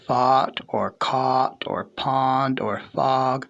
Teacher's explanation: I only have one aw sound in my arsenal. So whether it's fought or caught or pond or fog, it's all the same aw to me.